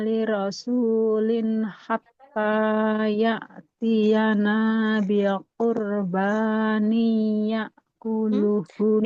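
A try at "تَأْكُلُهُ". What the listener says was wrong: Tidak ya. Titik 2 di atas huruf apa ibu? Nah, tak bukan ya ya. Bukan ya akuluhu. Tapi tak akuluhu. Hatta ya'tiyana biqurbanin ta'kuluhun nar. Kalau tanwin bertemu dengan tak jadinya ikhfa ya. Biqurbanil ta'kuluhun nar.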